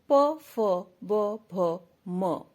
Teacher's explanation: प, फ, ब, भ, म औष्टव्य कहे गए हैं क्योंकि इनका उच्चारण होठों के मिलने पर ही होता है।